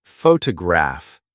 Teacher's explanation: photograph, noun, is stressed on the first syllable, but photograph adjective, is stressed on the third.